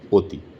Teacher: অতি লিখছি অ কিন্তু উচ্চারণ যখন করছি তখন ও অতি।